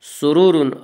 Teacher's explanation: فیہا سرور مرفوعہ، سرور، را کو پر پڑھیں گے، پھر را کو پر پڑھیں گے، اس کا قاعدہ ہے کہ را کے اوپر زبر پیش ہے تو را کو پر پڑا جائے گا، را کے نیچے زیر آئے تو را کو باریک پڑا جائے گا، یعنی دونوں را کے اوپر پیش ہے اس لیے دونوں را کو یہاں پہ پر پڑا جائے گا۔